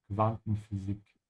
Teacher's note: Make sure to pronounce the U here like a soft V sound because it comes after a Q.